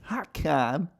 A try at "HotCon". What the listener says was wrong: Hotcom. Why does it sound like you're saying hotcom?